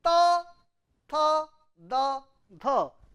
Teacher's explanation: Bengali, Hindi, all Indian language, ta, tha, da, dha. Unvoiced, unaspirated, unvoiced, aspirated, voiced, unaspirated, voiced, aspirated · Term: dental sound